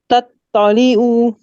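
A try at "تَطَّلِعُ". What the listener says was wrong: थोड़ा सा तो की कम करो, मतलब वो मत की तरह लग रहा है।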